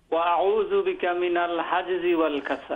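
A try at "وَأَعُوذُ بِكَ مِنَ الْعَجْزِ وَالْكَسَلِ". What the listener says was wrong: না, এটা হলো মিনাল আজজি, মিনাল এটা আইন জি আইন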